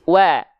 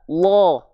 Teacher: Wawunya tetap tipis. Wa. Lamnya tebal.